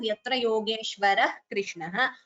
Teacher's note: visarga followed by ka jihva muliya